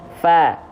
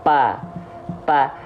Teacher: yang disentuhkan adalah antara bibir atas dan bibir bawah · fa jadi dilafalkan dengan menyentuhkan ujung gigi seri atas kita disentuhkan dengan bibir bawah bagian dalam